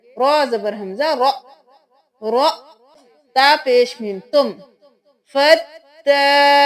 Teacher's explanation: اب فدارو تم نہیں کرنا، یہاں پہ حمزہ پہ جزم ہے تو ہم جھٹکا دیکھ کے پڑھیں گے